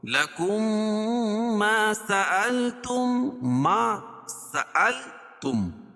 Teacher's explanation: میم ساکن کے بعد میم آئے تو ادغام مع الغنہ ہوگا اور اس کو ادغام مثلین بھی کہیں گے، اس لیے کہ مخرج اور صفات کے حساب سے دونوں ایک ہی حروف ہے.